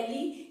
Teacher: L que é uma consoante alveolar então sua língua vai lá atrás do seu dente